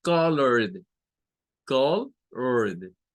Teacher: Entonces, para esta específicamente, el sonido es de una D. Y es que suena a D porque lo que está antes de la terminación ed es una consonante vibrante, una consonante con vibración